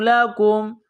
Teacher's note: کاف کو میم کے ساتھ پلس کرنا ہے، کاف کو باریک کرنا ہے